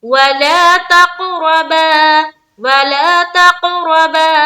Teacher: क़ाफ में हमें कलकला भी करना है और रा को पुर भी रखना है